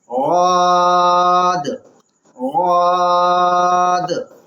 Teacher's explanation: زبان کی نوک کا دائیں یا بائیں طرف کا کنارہ، اس کو یا تو آپ دائیں طرف کے مسوڑے سے ملائیں یا بائیں طرف کے اوپر کے مسوڑے سے ملائیں، وہاں سے غاد ادا ہوتا ہے۔